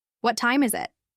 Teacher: let your voice naturally rise a bit in the middle and fall at the end